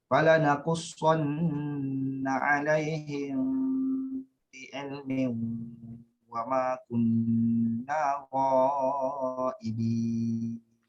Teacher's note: nun syaddah perlu dibaca dengan dengung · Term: wajibul gunnah